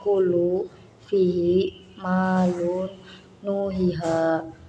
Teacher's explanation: Mat artinya panjang, tobi'i artinya biasa. Cara membacanya harus panjang sepanjang 2 harokat atau disebut dengan satu alif. Umpamanya kulu, fihi, malun, nuhiha, dan lain sebagainya. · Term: mat tobi'i